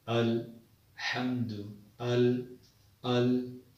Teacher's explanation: حمزہ کی آواز سینے کی طرف جو حلق ہوتا ہے، جو حلق کا حصہ سینے کی طرف ہوتا ہے، حمزہ وہاں سے ادا کیا جاتا ہے۔